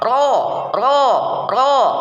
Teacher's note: pinggir lidah bagian ujung dengan sedikit permukaan lidahnya ditempelkan pada gusi atas, gusi pada dua gigi seri bagian depan. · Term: huruf ro